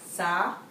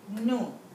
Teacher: For sa, you keep your mouth open, follow the rules of fatha, and for dhamma, your lips are rounded and protruding.